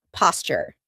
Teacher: a t and a y sound together make a ch sound like in Tuesday and tuna.